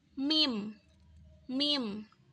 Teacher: huruf mim itu diucapkan dengan mempertemukan kedua bibir tetapi dengan cara yang lebih lembut sehingga menghasilkan suara m yang tidak terlalu tertutup mim mim seperti